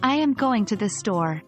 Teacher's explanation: In this sentence, our voice tends to fall at the end when we say, store. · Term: falling intonation